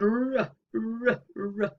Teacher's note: the articulators come close, but they're not as close as they are for a fricative. There's much easier passage of the air.